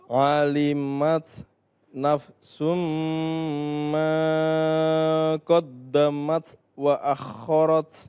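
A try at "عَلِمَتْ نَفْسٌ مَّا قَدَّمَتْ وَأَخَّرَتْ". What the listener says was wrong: Iya, mat tabi'iyah jangan terlalu panjang. Ma itu terlalu panjang. Alimat nafsum ma qaddamat wa akharat.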